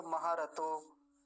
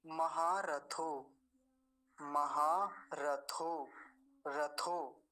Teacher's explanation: त अल्प प्राण होता है थ महाप्राण होता है